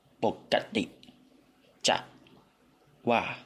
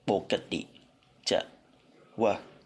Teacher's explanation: This word is /a/ vowel phoneme But it's also common to speak in /ə/ vowel phonemes by Krungthepian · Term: fake schwa vowel